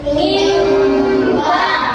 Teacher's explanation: Cara bacanya dimasukkan ke dalam huruf mim. Jadinya mim sambil didengungkan.